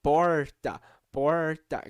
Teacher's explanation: tem um R bem para trás com a língua bem curvada para trás · colocar bem para trás a língua, que é exatamente esse som do R retroflexo, que é a língua totalmente para trás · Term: R caipira